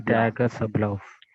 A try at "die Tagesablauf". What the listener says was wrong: It's not te, it's ta. The a has to be abcd. Tagesablauf. a. Tagesablauf.